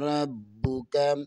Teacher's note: با میں شدد ہے، با کو 2 دفعہ پڑھیں گے، با پر قلقلہ بھی ہوگا